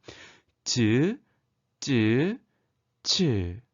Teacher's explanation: 공기가 좁아진 사이로 마찰도 일으키며 내는 소리입니다